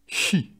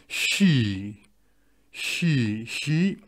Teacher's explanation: Mais on allonge le i, normalement.